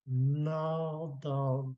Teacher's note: And the NG blended G, you don't hear the G.